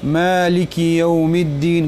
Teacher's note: ګوره ما من چې دی ولار زور دی دې کې یو مقدار مد وکي